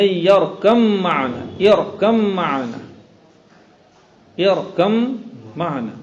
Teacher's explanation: با اور میم متحد المخرج متجانسین، دونوں ہو گئے متجانسین